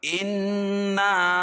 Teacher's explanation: الف سے پہلے نون کے اوپر زبر ہے تو اس کو 1 الف کے برابر کھینچ کے پڑھیں گے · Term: الف مد